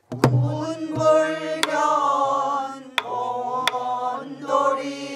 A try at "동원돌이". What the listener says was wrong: 자 동원에서 자꾸 통이 저기 봐 동을 짧게 하지 말라고 했죠.